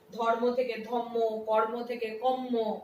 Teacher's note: ঠিক তেমনি পরাগত সমীভবনের ক্ষেত্রেও তাই, ধর্ম থেকে ধম্ম, কর্ম থেকে কম্ম, কেমন এই যে পরিবর্তনগুলো হয়েছে এগুলো সবই পরবর্তী ব্যঞ্জন ধ্বনির প্রভাবে পূর্ববর্তী ব্যঞ্জন ধ্বনি পরবর্তী ব্যঞ্জন ধ্বনির মতো হয়ে গেছে। এটাকে বলা হচ্ছে পরাগত সমীভবন।